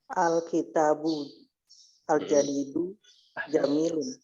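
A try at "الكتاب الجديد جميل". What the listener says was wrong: Al-kitabul jadidu jamilun. Sahih.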